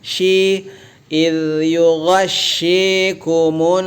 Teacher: shi ditarik bibir bagian bawahnya